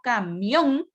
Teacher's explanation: Entonces, cuando yo tengo camión, la mayor fuerza de voz está al final, es una palabra aguda